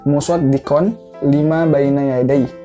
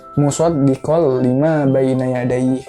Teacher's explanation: Nah, cuman karena dia tanwin, huruf konsonannya N, terus dia setelahnya adalah huruf lam, makanya dirubah yang tadinya musaddiqon, dirubah N-nya menjadi L karena huruf setelahnya itu lam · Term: idgham bila gunah